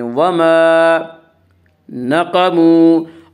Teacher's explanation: قاف کو پر پڑھیں گے، قاف حروف مستعلیہ میں سے ہے